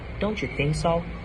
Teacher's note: Rising intonation appears in question like don't you think so?